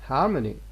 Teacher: after m we have got schwa